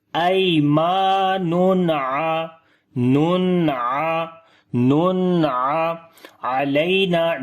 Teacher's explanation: After the tanween, like double dhamma, there is ain, so we make izhar here like the clear sound of noon.